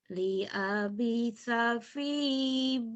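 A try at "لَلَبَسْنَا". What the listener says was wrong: Ya, lala. Lala itu nggak ada alif. lam semua. Kalau alif nggak bisa gabung. Ini lam. Lala bisa fi batnih.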